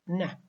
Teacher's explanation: Neh is nasal because it is produced by allowing air to escape through the nose. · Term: nasal consonant